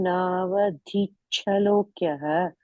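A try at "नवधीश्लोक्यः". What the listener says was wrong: I'll tell you what slight thing is. You are saying chalokya, you are saying there, right? Navadich, then shlokya, not chalokya. Navadich shlokya. Yeah, that's it, yeah.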